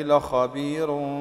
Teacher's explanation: لخبير هنا الراء مرققه وصلا لان قبلها يا مد